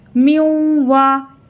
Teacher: اس نون کو نہیں پڑھیں گے، میم کو واو سے ملا کر پڑھیں گے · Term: ادغام واو